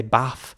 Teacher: some might say bath with more of an F sound at the end